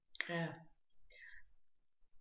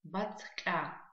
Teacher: Так как после у нас стоит мягкий знак, мы с вами понимаем, что нужно смягчить звук «к».